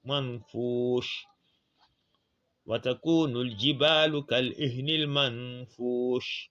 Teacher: Watakunul jibalu, ka et al, on dit kal, c'est dit ni kal ihni, ni et al, kal ihnil, ma'an. Donc ici on applique la lettre du tajwid qu'on appelle ikhfa. Le an ne doit pas être très bien ressorti.